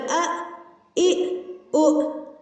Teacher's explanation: اب دیکھیں حمزہ پر جب بھی جزم ہوگا اس کو ہم جھٹکا دے کر پڑھتے ہیں حمزہ، حمزہ زبر ا، ا، او۔ اب دیکھیں آواز جو ہے وہ سینے سے یعنی حلق کے آخری حصے سے ادا ہو رہی ہے حمزہ، حمزہ زبر ا، ا، او۔